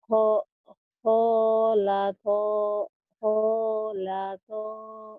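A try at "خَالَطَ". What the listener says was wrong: Kholato. Pendek. Kho-nya doang yang panjang. Kholato.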